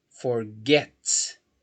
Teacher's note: Forget Ok Forget a sílaba tônica é a final